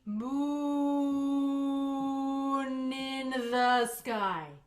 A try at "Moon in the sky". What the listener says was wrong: Ah, I still hear chop chop. Do you feel that too?